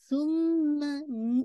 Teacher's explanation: یہ جو میم پہ جو وائبریشن ہے نیزل ساؤنڈ، یہ آپ کو فیل ہونا چاہیے جب آپ اپنی نوز پہ ہاتھ رکھیں تو یہ والی کیفیت ہونی چاہیے.